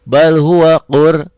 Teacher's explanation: Bal idhar hukum lam mati, bal huwa qur, rohnya tebal karena sebelum roh mati baris di atas